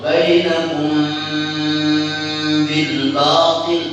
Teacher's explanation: dengan membaca ikhfa bersama gunnah yang nampak di situ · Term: ikhfa syafawi